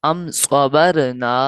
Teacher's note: صاد جو ہے حروف مصالیہ میں سے ہے تو موٹا پڑھنا ہے